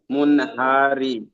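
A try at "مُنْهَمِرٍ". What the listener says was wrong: হারি নয়, মিম নুন, মিম নুন জের মুন, হা জাবার হা, মুন হা, মিম রজের মির, মিম রজের মির, মুন হামির, মুন হামির।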